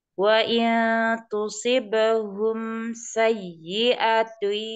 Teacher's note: mim sukun ketemu sin itu izhar syafawi ya dialirkan sedikit tawasud